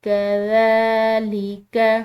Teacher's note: کھڑی زبر، اس کو ہم نے عام زبر کے مقابلے میں کھنچاؤ دے کر ایک الف کے برابر لمبا کر کے ادا کرنا ہوتا ہے